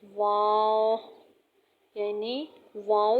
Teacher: واو دونوں ہونٹوں کو گول کرنے سے واو ادا ہوگا۔ درمیان میں دونوں ہونٹوں کے اسپیس رہے گا